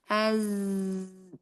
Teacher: Huruf za itu ujung lidah hampir bertemu gigi seri bawah.